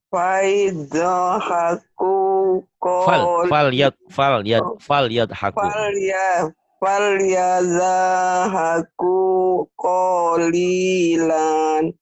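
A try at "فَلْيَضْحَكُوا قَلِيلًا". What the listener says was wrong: Nah, ini linya pendek. Lannya pendek. Kecuali kalau dihentikan. Kalau dihentikan falyadhaku qalila gitu. Kalau dihentikan ya.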